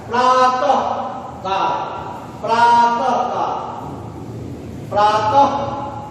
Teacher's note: विसर्ग जो है इसका जब उच्चारण करेंगे तो लगता है प्रातः का, प्रातः का, प्रातः, लगता है जैसे हम इसको ह बोल रहे हैं